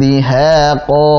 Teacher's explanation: Nah, di sini ikhfa haqiqi, tanwin bertemu dengan dal, tipiskan.